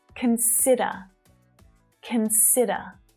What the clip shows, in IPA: kən'sɪdə